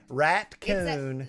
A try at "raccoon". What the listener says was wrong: It's not a rat-coon. It's a raccoon. It has 2 syllables. Raccoon.